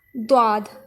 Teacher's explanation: دواد، زبان کی کروٹ جب اوپر کی داڑھوں سے لگے۔